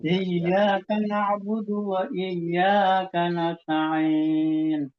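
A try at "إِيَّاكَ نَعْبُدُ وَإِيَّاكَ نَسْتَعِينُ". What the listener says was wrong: Iya, soalnya masih ada kesan ya, kesan saja, bukan bukan dimatkan enggak, cuman ada kesan sedikit di situ, agak lambat di situ. Dan di alham ha itu diupayakan lagi ya, ha itu diupayakan lagi untuk kembali ke makrotnya.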